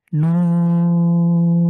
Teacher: just হরফটাকেই চার second long করে পড়লে আমাদের হয়ে যাবে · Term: চার আলিফ